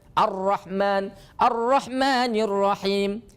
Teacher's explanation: maka dibacanya hilangkan Alif lamnya hilangkan lamnya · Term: idgham Syamsi